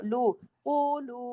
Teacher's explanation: آیت نمبر 136 پہ دیکھیے، قولو میں قاف موٹا، لو کو زیادہ کھینچنا ہے کیونکہ واؤ مدہ بھی ہے اور اوپر مد بھی ہے